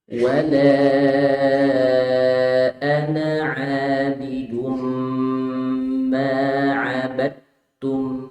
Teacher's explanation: Jadi na di sini itu dibaca pendek ketika wasal. Jadi ketika diwasalkan dipendekkan.